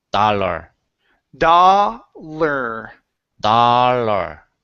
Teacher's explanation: You don't want to say dollar, but dollar. Add the R sound at the end. You need that R vowel.